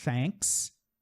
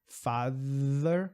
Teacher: Thanks, sem som na garganta. Father, com som na garganta. Na boca a gente faz a mesma coisa.